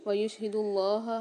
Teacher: اللہ کے لام کو موٹا بھی پڑھیں گے اور کھینچ کے بھی پڑھیں گے۔